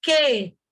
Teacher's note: em queijo, o U é mudo, porque existe um dígrafo.